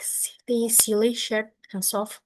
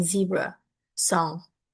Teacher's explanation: both are made by pushing air through a narrow gap near the teeth, but S is voiceless like silly, short, and soft, and Z is voiced like zebra, song